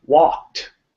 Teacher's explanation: Notice I had the unvoiced T sound there.